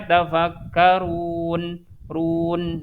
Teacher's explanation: Tapi kalau yang sukun yang arif dia harokatnya sebenarnya fathah, tapi karena kita mau berhenti di situ jadi berubah harokat fathahnya jadi harokat sukun. Jadi dibacanya kan ya tafakkarun run. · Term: sukun arid